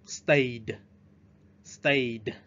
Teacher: Đối với chữ stay ở đây chúng ta sẽ phát âm cái âm ed là âm d.